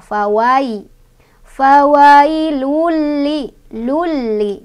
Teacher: ada harf lin karena ada ya sukun, sebelumnya ada baris fathah di huruf wawu. Bacanya dilunakan aja